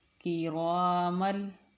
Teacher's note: ہم میم کو لام کے ساتھ ملا کے پڑھیں گے